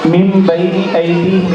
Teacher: نون ساکنیہ تنوین کے بعد با ایک تو نون ساکنیہ تنوین کو میم سے بدل کر گنا اور اقبا کے ساتھ پڑھیں گے، اس کو اقلاب کہتے ہیں.